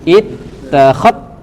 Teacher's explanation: Jadi zalnya tidak dibaca lagi karena dia sudah dilebur kepada huruf ta. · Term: idgham